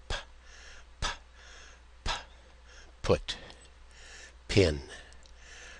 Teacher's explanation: So, you're using both lips, stopping the sound, and then letting it loose, but not using your voice box. Voiceless. P Pin. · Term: aspirated P